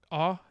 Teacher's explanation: i find for me that vowel that ah is a bit round